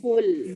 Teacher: Bila kita sebut qul, so dekat sini lam ni, qul, lam ni, hujung lidah ni akan naik ke atas langit.